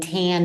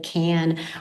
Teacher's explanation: I'm saying tan instead of can or I'm dropping off speech sounds like um in blends, so poon instead of spoon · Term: phonological processes